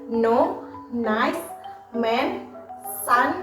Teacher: udara tetap mengalir melalui hidung karena langit-langit lunak diturunkan membuka jalur udara ke hidung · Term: konsonan nasal